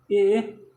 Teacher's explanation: ए कंठ और तालु से निकलता है।